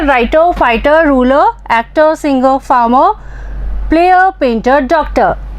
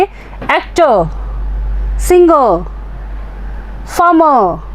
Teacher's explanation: last में ये जो R की साउंड आ रही है इसको हमें इस पे स्ट्रेस नहीं देना है, ये इस पे जोर नहीं देना है, कम सुनाई देनी चाहिए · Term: R को साइलेंट रखना है